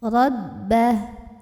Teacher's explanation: ra-nya dibunyikan secara tafkhim karena ra-nya berbaris di atas ya, maka bacanya tebal, pangkal lidah dinaikkan